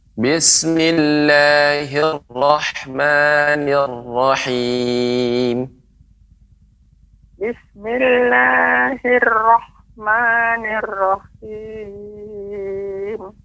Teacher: Huruf ra-nya Nek lebih ditebalkan lagi dan dikurangi getarannya.